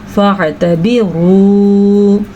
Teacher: را کو پر پڑھیں گے اور اس کو کھینچ کے بھی پڑھیں گے کیونکہ آگے واو ساکن ہے